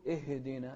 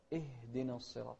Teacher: نسكن الهاء بدون قلقلة للهاء